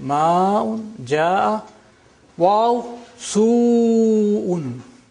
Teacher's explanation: Hamza is a very difficult sound to be pronounced. So it has to be brought out, pronounced clearly. So the vowel is lengthened. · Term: extra lengthening